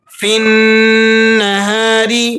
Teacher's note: فا کے بعد جو یا ہے، الف ہے اور لام ہے، یہ تینوں حروف سائلنٹ ہو جائیں گے، یعنی ان کو آپ نے نہیں پڑھنا بلکہ بیچ میں سے گرا دینا ہے۔